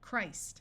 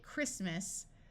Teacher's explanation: when we go from Christ to talking about the holiday, Christmas, the T sound disappears and the I becomes short